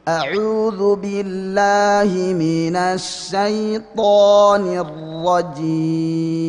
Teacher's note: Jadi tetap a nggak boleh o, la nggak boleh lo